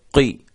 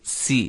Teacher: اگر ان کے نیچے زیر بھی آ جائے تو پھر بھی یہ موٹے ہی ہوں گے، باریک نہیں ہوں گے